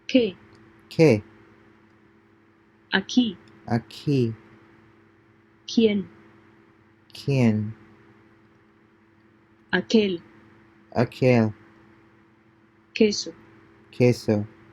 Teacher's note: So the Spanish Q always appears in combination with the letters U, is pronounced like the K in the word kid, but without puff of air